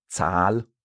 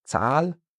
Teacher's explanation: Or for Zahl, the number, we have a long A because we have that H after.